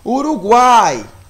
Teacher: o som o da primeira vogal ele é mais baixo né é uma semivogal u o ar é uma vogal e ue é uma semivogal · observe aí que o som ele começa baixo quando chega na primeira vogal, alteia na segunda e novamente baixa na terceira vogal. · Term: tritongo